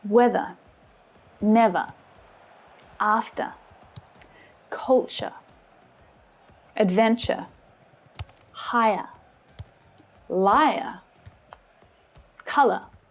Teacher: They all make the same schwa sound at the end of the word.